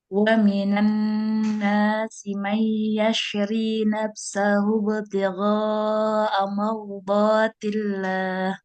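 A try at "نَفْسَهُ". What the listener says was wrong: Nah, pengucapan huruf Fa ya hati-hati jangan nafsa. Nafsa, dia mengalir suara dan nafasnya. menempel itu bibir bawah itu nempel ke gigi seri atas, bukan bibir dengan bibir. Jadi bukan nafsa tapi nafsa.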